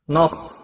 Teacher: خا حروف مستعلیہ میں سے ہے، پور پڑا جائے گا، اس کو ہلانا نہیں